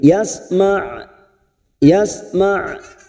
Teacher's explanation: karena kita wakaf di sini maka ujungnya kita rem dan kita alirkan karena mempunyai sifat tawasud pada huruf Ain